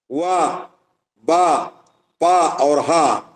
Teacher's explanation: वा, बा, पा और हा ये ओष्ठ स्थान वाले हैं